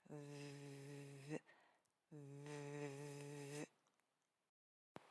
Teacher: V is a labial dental fricative, a lip and teeth sound. You place your top front teeth on the inside of your lower lip right at a wet and dry boundary.